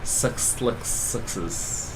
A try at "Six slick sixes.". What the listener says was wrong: You're definitely saying sex.